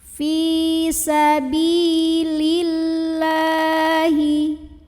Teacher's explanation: lam jalalah dibunyikan secara tarqiq karena huruf sebelumnya lam barisnya kasroh maka dibunyikannya lam ini adalah tipis pangkal lidah datar